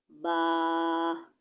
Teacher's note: با دونوں ہونٹوں کے تر حصہ سے ادا ہوتا ہے · बा दोनों होठों के तरता हिस्सा से अदा होता है